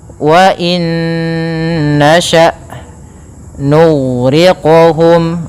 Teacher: Kemudian pada lafal hamzah, hamzah itu punya sifat, yaitu sifat jahar dan sifat syiddahnya. Maka dia tidak boleh mengalir nafasnya dan tidak boleh mengalir suaranya, dia harus tertahan.